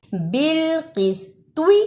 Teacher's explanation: بالقسط، اسے بالقسطی نہیں پڑھنا، توا کی جگہ پر تا کی آواز نہیں آنی چاہیے